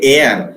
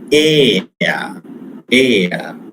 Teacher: We say air in Indian English. We pronounce the final r sound. They never pronounce in the foreign country.